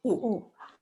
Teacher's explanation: The ooh of moon, but not dragged out. Shorter.